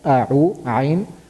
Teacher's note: So ayn is pronounced from the middle of the throat. So when we're saying a'u, a'u, first we are pronouncing from the bottom of the throat, which is hamza, then we are moving to the middle of the throat, which is ayn.